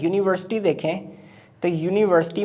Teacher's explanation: یونیورسٹی میں یو سے start ہو رہا ہے یہ، لیکن اس کی ساؤنڈ وائی کی آ رہی ہے، یا۔ بالکل جیسے ایک یئر ہوتا ہے، یہ یئر یا کی ساؤنڈ ہے۔